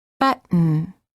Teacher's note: hold the t as in but and then add an N without releasing the tongue from the gum Ridge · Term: held T, Held T